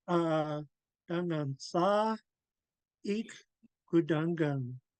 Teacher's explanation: you could hear me pause after Sa.